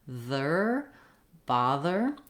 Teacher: If the TH sound gives you difficulty or if THER gives you difficulty, work on that sound in other contexts first and then bring it into a word like bother. I need my voice on and my tongue is between my teeth and the air is flowing.